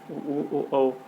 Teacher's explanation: जिन स्वरों के उच्चारण में ओठ वृत्त का या गोलाकार होते हैं उन्हें वृत्त मुखी स्वर कहते हैं